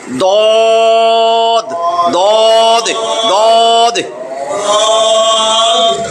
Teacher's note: জিহ্বার গোড়ার কিনারা উপরের মাড়ির দাঁতের গোড়ার সঙ্গে মিলাইয়া পড়িতে হয়।